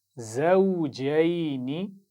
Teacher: शुरू में ज़ा है, सीटी के साथ पढ़ना है